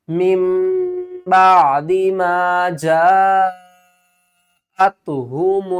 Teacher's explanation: دیکھیں جیم الف مد زبر جا، حمزہ تا زبر ات، جاءت 5 الف کی مقدار کھینچ کر پڑھیں گے